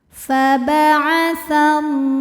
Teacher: syamsiah sebab Alif lamnya menghadapi huruf Syamsiyah yaitu huruf lam lagi maka alif lam ini tidak kita baca atau kita lewatin faba'atallah la hukumnya Mad thi'i muqaddar sebab huruf lam berbaris fathah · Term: alif lam syamsiah